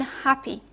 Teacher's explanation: you have lax E in vinegar, and you have the non-phonemic E in happy